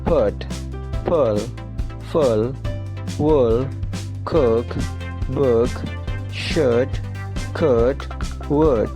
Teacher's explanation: mengucapkan suara U di tenggorokan dengan tidak menggerakkan bibir